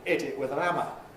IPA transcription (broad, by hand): ˈɪt ɪt wɪð ən ˈæmə